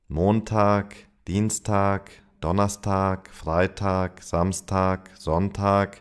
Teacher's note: the G sound, G, that if it appears at the end of a word, it is pronounced as a K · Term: K sound